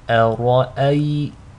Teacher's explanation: make sure the hamza is light, the ra is heavy, and the second hamza is light